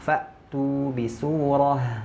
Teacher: Ketika hamzah itu pita suaranya mengecil, menyempit. Kenapa? Karena dia tertahan. Nah, di sini tertahan. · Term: syiddah